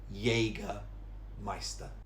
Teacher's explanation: it's actually jägermeister with a y sound